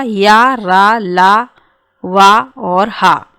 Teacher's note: जिन वर्णों का उच्चारण करते समय स्वर तंत्रियों में गूंज उत्पन्न होती है उसे कहते हैं घोष वर्ण।